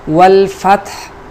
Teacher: ہا کے اوپر سکون لائیں گے۔ دوسری بات یہ ہے کہ یہ ہا وسط حلق سے ادا ہونے والا ہا ہے